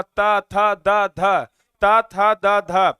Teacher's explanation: अगर आप ता था दा धा बोलेंगे ना तो जीव आपका ऊपर वाला दांत को जाकर के स्पर्श कर रहा है, आप देख लीजिए।